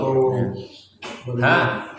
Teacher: Makhrajnya di tenggorokan bagian bawah